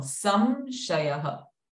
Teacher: Sa is having Anuswara followed by Sha sound. So the Anuswara sound remains M.